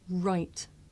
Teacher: I make the r sound by making my lips come out and pulling my tongue back